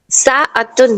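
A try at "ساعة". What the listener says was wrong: हाँ हाँ हाँ, साअतुन घड़ी, आइन को सही प्रोनाउंस करिए, साअतुन घड़ी।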